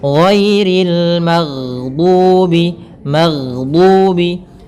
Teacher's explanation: Kemudian pelafal ri rinya tipis ghairil magdubi · Kemudian pada lafal ghairil magdubi ghairi giri sama di sini ada bacaan lin yaitu adanya fathah bertemu dengan huruf ya sukun. Kemudian pelafal ri rinya tipis